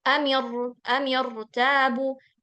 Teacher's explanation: Karena dia hamzah wasal. Khusus hamzah wasal walaupun kasroh, dia tetap tebel. Jadi bacanya amirtabu.